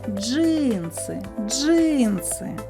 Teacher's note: наголос падає на перший звук и